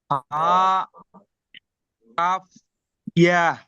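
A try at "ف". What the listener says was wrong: না, ফা কই ইয়া, ইয়া কোথায় দেখতে পাচ্ছেন? এটা ফা ফা কফ, আর এটা কি কাফ। ফা।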